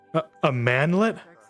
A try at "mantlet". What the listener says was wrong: No, mantlet. I purposely, pronounced the T to make sure you wouldn't make that mistake.